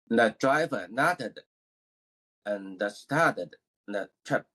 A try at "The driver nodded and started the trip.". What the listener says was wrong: Exactly. That's better. So you want to make that effort to pronounce the tense.